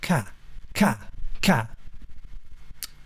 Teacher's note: I'm going to use a kind of K articulation to go. So it's almost like ka, ka, ka, but on the in-breath. And it's short and sharp and snappy.